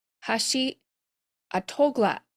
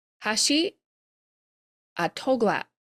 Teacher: Notice we've got some glottal stops, so the words are cut off.